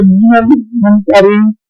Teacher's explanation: نون ساکن کی آواز جو ہے یہ منا کے اعتبار سے ناک میں چلی جائے گی